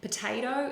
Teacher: the po is a weak syllable, and the ta-to they are more stressed within the word